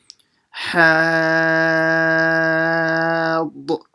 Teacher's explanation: you pronounce the ha from the middle of the throat